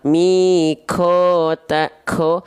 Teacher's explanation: berarti kalau dia keluar nafas itu makhrajnya kaf. Tandanya pangkal lidahnya kurang dalam nempelnya ke langit-langit yang paling dalam.